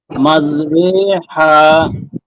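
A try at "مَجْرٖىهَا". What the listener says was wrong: হা না তো, হা হা, আবার বলেন মাঝে রে হা। এখনো হা হয়ে যাচ্ছে, হা হবে না তো, হা হা, বাঘের মতো গর্জন দিবেন।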